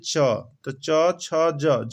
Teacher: च ध्वनि या छ ध्वनि या ज ध्वनि सबका उच्चारण स्थान क्या हो जाएगा, तालु।